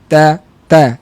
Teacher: Masa kita nak mula sebut ta tu situ dah ada angin tapi kecil